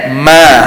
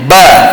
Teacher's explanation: Tapi huruf mim dia tak perlu tekan, ma lepas. Dan huruf mim juga makhraj dia ada bunyi ke hidung. Tapi huruf ba dia tak ada bunyi hidung.